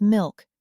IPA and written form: mɪlk (milk)